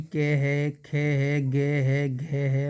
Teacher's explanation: के वर्ग जो कंठ व्यंजन है कंठ से बोले जाते हैं